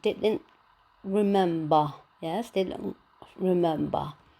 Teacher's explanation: Yes, as the schwa can be produced or not, we place it between brackets. The word ends in a fourth explosive ta, so we place the glottal stop and the lack of release.